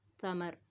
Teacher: ثمرا، تا میں سیٹی نہ ہو، اس چیز کا خیال رکھنا ہے. تا کو باریک نرم پڑھنا ہے، را کو موٹا پڑھنا ہے. را پہ زبر ہے، یہاں پہ اس کو موٹا پڑھا جائے گا.